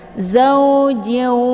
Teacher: tanwinnya langsung dimasukkan ke dalam waw dengan cara ditekan kemudian ditahan lebih kurang 2 harokat sehingga terbentuk suara yang mendengung. Zaujiu. Jadi jangan dibaca jin ya. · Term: idgham bi gunnah